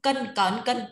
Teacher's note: Cờ thôi, đừng đọc bật hơi.